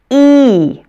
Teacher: Long E is pronounced E. It almost sounds like I say E twice, or maybe that another E or a Y sound is added to make it a diphthong. Make sure to stretch it out like I do and to hold your muscles tight.